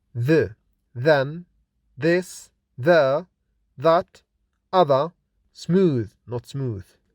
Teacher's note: dental sounds because they are produced when we insert the tip of the tongue between both upper and lower teeth, which are made with a partial closure or narrow opening using the upper front teeth against tongue tip.